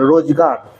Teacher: এই র টা কিন্তু একদম শেষে আছে সেই জন্য কিন্তু এই ক্ষেত্রে র এর পরে আর অ আসছে না